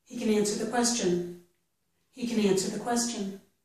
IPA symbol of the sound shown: kɪn